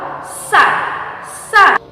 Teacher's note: Nah, untuk sa dilapaskan dengan ujung lidah dipertemukan dengan gigi seri bagian bawah ya. Untuk sa mempertemukan ujung lidah dengan gigi seri bagian bawah. Gigi seri bagian bawah. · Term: huruf sa